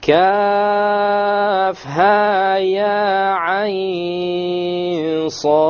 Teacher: Ayn is 6 with the ikhfa, with the ghunna, and then the sad has the qalqala.